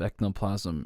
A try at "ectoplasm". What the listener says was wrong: You say ecno, but it might be you're trying to say toe, but like maybe there's like a part in your talking nasal like ability that makes it go no sometimes.